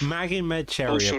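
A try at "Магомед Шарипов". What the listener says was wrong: Sharipov. You have to roll the R's.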